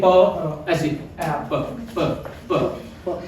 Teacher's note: The sound of the voiceless consonant p comes from the mouth only